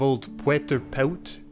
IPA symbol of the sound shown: ø